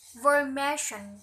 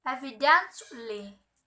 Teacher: They have primary stress on the first syllable of the suffix.